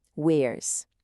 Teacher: Se o som final é vozeado ou é uma vogal, como em wear, o som é de Z, como em zebra